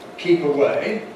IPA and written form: ˈkiːp əˈweɪ (keep away)